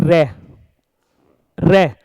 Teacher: जीभ का जो अग्रभाग था वो वाइब्रेट हुआ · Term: प्रकंपित व्यंजन